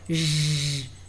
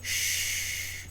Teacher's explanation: Você percebe quando você faz o som que o J movimenta a prega vocal e o CH ou o X, que tem o mesmo som, não projetam as pregas vocais.